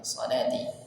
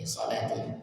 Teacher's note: maka di sini lam panjang dua harakat